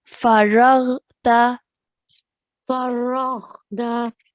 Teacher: Try and make that ghain sound rather than a kha.